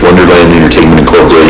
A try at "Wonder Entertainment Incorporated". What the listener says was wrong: It's not Wonderland, it's